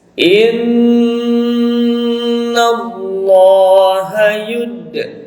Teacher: huruf dal dipantulkan, ya hukumnya adalah qalqalah sugro